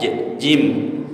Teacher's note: jim, tengah lidah ke langit-langit.